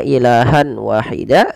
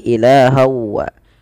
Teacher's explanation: apa yang dimasukkan adalah bunyi suara Nun kepada bunyi wau awalnya ilahan Wahida karena kita masukkan menjadi ilahawa langkah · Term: Idgham bhunah